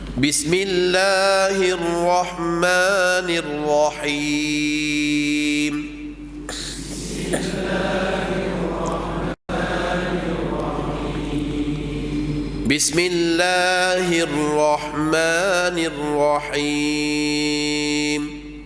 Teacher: Kita tebalkan ra, tetapi kita tidak muncung ke depan. Ra kalau dia bersabdu, bacaan waqaf pun tuan-tuan hendaklah dihilangkan getaran.